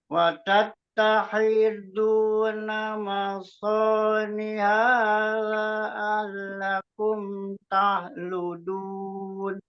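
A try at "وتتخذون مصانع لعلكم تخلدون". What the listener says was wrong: kok nih A-nya. panjangkan gitu.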